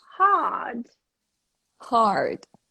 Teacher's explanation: British don't pronounce rhotic R. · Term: long R